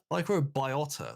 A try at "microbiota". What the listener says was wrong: I think it's your accent that's making me thinking you're adding an extra vowel there that isn't.